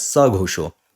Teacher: Since after saha you have any other letter except a, the visarg disappears. So instead of saha ghosho, you write as sa ghosho, right?